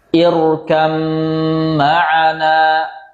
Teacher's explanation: Jadi bukan ir ya, ir nggak tipis dia, tebal karena hamzahnya hamzatul wasl